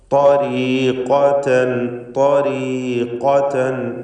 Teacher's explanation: ത്വരീഖതൻ പൂർണ്ണമായ തഫ്ഖീം കൊടുക്കണം. ഏറ്റവും കടുപ്പമുള്ള അഖ്വൽ ഹുറൂഫ് എന്ന് വിശേഷിപ്പിക്കപ്പെടുന്ന തഫ്ഖീമോടുകൂടി സ്വരഭാരത്തോടെ ഉച്ചരിക്കുക.